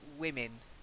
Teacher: the wi at the beginning is slightly stressed, wi, and then min, women.